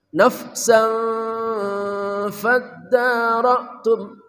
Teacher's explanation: ditahan disertai ikhfa dan dengung, namanya ikhfa haqiqi